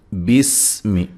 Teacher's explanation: سین کو باریک سیٹی سے لیکن ہلانا نہیں ہے